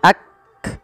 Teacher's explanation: dan sifat ee Hames cara membacanya yaitu bacaan syiddahnya dulu yaitu Kaf itu ditahan suaranya Ak baru dikasih Hames Hames itu mengalirnya nafas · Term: sifat syiddah